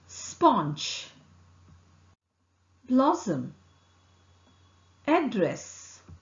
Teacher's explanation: S is articulated with the tip of the tongue in front of the tongue close to the teeth ridge. The air escapes between the tongue and the teeth ridge. Vocal cord does not vibrate here.